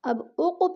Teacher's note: ولا اقسم، اب اق پہ جو ہے قلقلہ ہو رہا ہے، قاف حروف قلقلہ میں سے ہے اور ساکن ہے تو اس لیے ہم نے اس کو ہلا کے پڑھنا ہے، یعنی جنبش دینی ہے۔